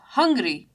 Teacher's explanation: in hungry, you have the ung sound for hungry as the stress in the word. So hungry, you have ung portion with more stress.